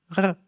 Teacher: It's completely enough to say it like r, like once. The tongue is just moving once in the back.